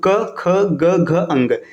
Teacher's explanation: जो वायु जो मुक्त होगी ये कंठ के माध्यम से होगी, मतलब कंठ के सहारे से वायु मुक्त होगी। तो क ख ग घ अंग, इसको कंठ व्यंजन कहते हैं।